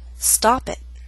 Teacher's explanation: now let's do statement five you should have said stop it that's a true tea with not much puff of air and a glottal stop